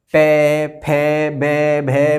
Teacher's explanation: इन्हें बोलने के लिए होठों का प्रयोग किया जाता है, होठों को आपस में लगाया जाता है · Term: ओष्ठ से बोले जाने वाले